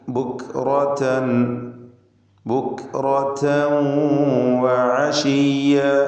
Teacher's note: റാഇന് തഫ്ഖീം കൊടുക്കുക, തടിപ്പിച്ച് സ്വരഭാരത്തോടെ റാ ഉച്ചരിക്കുക. തൻവീൻ വന്നത് ശേഷം വാവ് ഉള്ളതുകൊണ്ട് തൻവീനിനെ വാവിലേക്ക് ലയിപ്പിച്ച് മണിക്കണം.